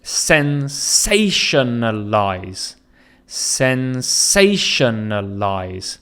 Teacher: So you can hear the stress is on say, and then there's unstressed syllables following that.